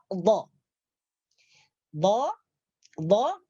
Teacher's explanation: antara tepi lidah kanan atau kiri diangkat ke atas geraham. Menyentuh geraham atas. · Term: huruf dhad